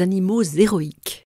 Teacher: on fait la liaison devant l'adjectif, animaux héroïques, mais pas devant le substantif, les héros